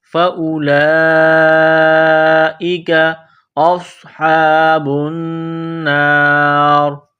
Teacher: حمزہ کو صاد کے ساتھ ملانا ہے، صاد کو موٹا کرنا ہے، صاد میں سیٹی کی آواز پیدا کرنی ہے۔ ہا کو ایک الف کی لمٹ میں کھینچنا ہے، با کو نون کے ساتھ ملانا ہے، نون مشدد ہے تو غنہ کریں گے، آواز ناک میں چھپائیں گے۔